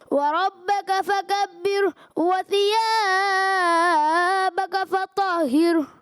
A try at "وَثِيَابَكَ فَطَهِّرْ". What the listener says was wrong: جی وَثِيَابَكَ، یہ آپ نے حرف مدہ کو ایکسٹرا لمبا کیا، اس کو آپ نے درست کرنا ہے.